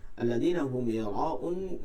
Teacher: মিম সাকিন পর ইয়া আছে, এখানে গুণনা করা যাবে না